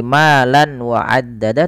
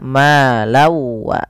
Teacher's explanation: Karena bertemu dengan huruf waw, nanti setiap kita membacanya, tanwinnya, bunyi nunnya dimasukkan ke waw sehingga diganti dengan w. Jadi bukan lagi malan wa addada tapi malau. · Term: idgham bi gunnah